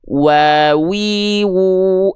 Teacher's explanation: huruf wau di sini kita lafalkan muncung mulutnya harus monyong mulutnya